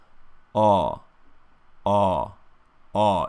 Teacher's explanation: So the lips are very subtly rounded for this aw vowel. They don't push in too far forward.